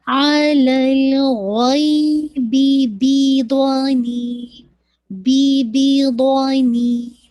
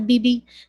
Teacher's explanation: دونوں با ساتھ آ رہے تو دونوں کو ایک ایک حرکت دینا ہے ، اتمامی حرکت کرنا ہے، ایسے نہیں پڑھ سکتے غیبی بی